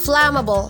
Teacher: The stress is on the first syllable, fla. Flammable, not flammable.